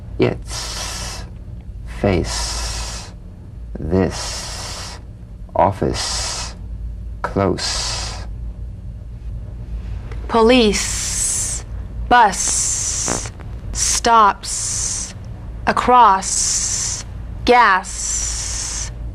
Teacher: the S is like the Z except it's unvoiced so it's the same tongue placement as the Z the Z the S is like a gentle escape of steam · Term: unvoiced s sound